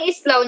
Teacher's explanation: ang diptonggong aw naman ang ginagamit at ito ay nakikita sa huling pantig ng salita na islaw.